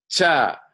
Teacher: The second set is what is called palatal, where the tongue top goes to the mouth roof.